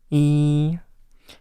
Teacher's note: You just pronounce the vowel, but you try to let air flow out of your nose. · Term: nasal vowel